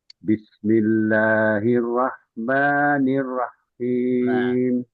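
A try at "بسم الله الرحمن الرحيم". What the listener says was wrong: Rohnya jangan berhenti. Rah. Jadi jangan malu-malu untuk mengalirkan rah.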